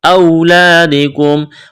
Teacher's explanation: واو ساکن سے پہلے زبر ہے، واو لین ہے، بغیر کھینچ کے پڑھنا ہے